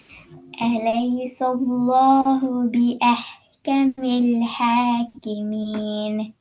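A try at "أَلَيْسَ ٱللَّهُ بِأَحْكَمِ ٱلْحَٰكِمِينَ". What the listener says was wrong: மீன் இன்னு வரக்கூடாது. ஹாக்கி மீன் கடைசி இன்னு வருது. ஹாக்கி மீன் இன்.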